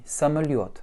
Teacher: l'accent tonique tombe toujours sur le yo.